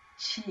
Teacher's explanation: chi, your tongue is way up in the front